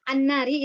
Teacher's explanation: Dikarenakan lebur, alamnya nggak kebaca, tapi apa namanya? Lamnya itu walaupun tulisannya ada tapi tidak dibaca ya. Karena lebur ke huruf nun. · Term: idgham syamsiyah